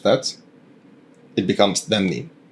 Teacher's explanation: if a word ends with a vowel, like enta or da, the I or U in the first syllable of the next word would just be dropped off. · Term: vowel gets completely dropped